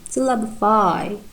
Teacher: And in the word syllabify, we have tertiary stress. In the I, the full vowel at the end